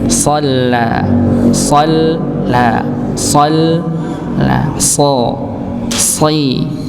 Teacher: Ujung lidah bertemu dengan gusi bawah, sama seperti huruf sin, sa, si, su. Oke, sama, cuma bedanya so-nya ditebalkan dengan mengangkat pangkal lidah